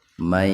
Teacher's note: Jadi membacanya nun diidghamkan, dimasukkan ke ya bigunna dengan mendengung. Tahan dua ketukan biar terdengar mendengung. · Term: idgham bigunna